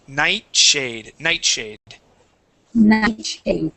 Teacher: So that T and that S are sort of going to combine.